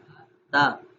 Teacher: زبان کی نوک جو ہے وہ اوپر والے دانت جو ہے ہمارے سامنے والے دانت، ان دانتوں کی جڑ سے لگے گی